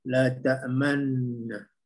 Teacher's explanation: ismam tu dah ada, cuma dengung tu kurang 2 harakat